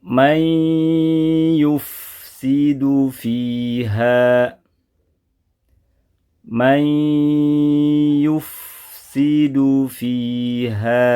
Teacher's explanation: Man, nun sukun pada man dibaca dengan hukum idgham bi gunnah. Praktek membacanya harus menyertakan gunnah 2 harokat.